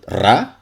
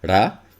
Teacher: There's also the thing that this symbol clearly is a rhotic sound, but what kind of rhotic sound? Is like a trill, ra? Is like just an alveolar tap, ra?